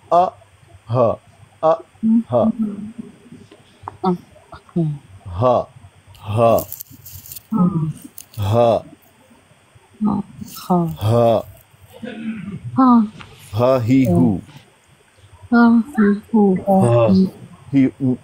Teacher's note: हमज़ा हा ये अदा होते हैं हलक के आखिरी हिस्से से, उसको अक्सा हलक कहते हैं।